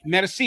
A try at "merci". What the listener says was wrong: Merci. Say it without the R. So I'll say both so you know the difference, other one. So in French, it would be merci. In Creole, it's merci.